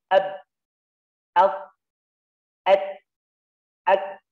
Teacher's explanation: Syiddah, ya, terlihat karakter atau sifatnya ketika dalam keadaan sukun. Dimatikan suaranya.